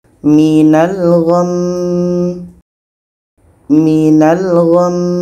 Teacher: Maka kalau kita berhenti kita dengungkan dulu dua harkat baru matikan mimnya